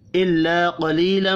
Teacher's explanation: الف اور یا مدہ 1 1 الف کے برابر کھینچ کر پڑھی جائیں گی۔ قاف حروف مستعلیہ ہے، پر پڑھیں گے، میم مشدد پر غنہ کرنا ہے۔